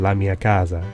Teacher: The change from S to Z is an instance of intervocalic voicing.